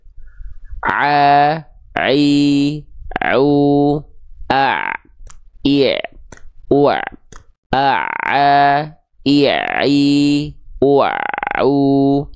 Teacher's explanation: Ketika kita lafalkan huruf ain, katup epiglotis inilah yang dia akan bergerak mengarah ke dinding tenggorokan. Menyempit ke arah dinding tenggorokan.